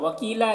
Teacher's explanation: یہاں پر یا مدہ ہے، اسے 1 الف کے برابر کھینچیں گے۔